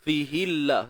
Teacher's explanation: kalimah Allah kat sini kita baca dengan nipis.